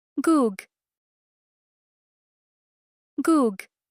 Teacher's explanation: your tongue touches the back of the roof of your mouth and then releases. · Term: final G sound